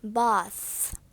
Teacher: So voiceless th has no vibration. No vibration in your vocal cord. For example, just your air will pass through your teeth.